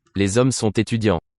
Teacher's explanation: the final T of the word sont is now sounded because it has a following word to support it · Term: linking